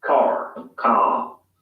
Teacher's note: in car the vowel sound is lengthened in place of the r sound